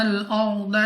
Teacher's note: را ساکن سے پہلے زبر را کو پر پڑھیں گے یعنی موٹا، دواد مستعلیہ موٹا پڑھیں گے منہ اور آواز کو کھول کر.